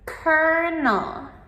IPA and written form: ˈkɜːrnəl (Colonel)